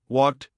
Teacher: After a voiceless sound like in walked or watched, the ed is pronounced like a simple t sound walked t. After a voiced sound like in played or cleaned, the ed is pronounced like a simple d sound play d.